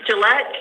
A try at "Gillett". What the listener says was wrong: No, without the E and the N.